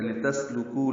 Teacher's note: لام کو جلدی پڑھنا ہے، سین ساکن پہ ہم سے، لِتَسْلُكُوا لام کاف باریک ہے، کو واو مدہ ہے، 2 حرکات لمبا ہے